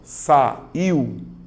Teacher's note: a letra i tem o som mais forte então a letra U ela é mais fraca ela é uma semivogal